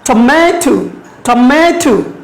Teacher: Now you look at this red one, ma. So we stress on ma.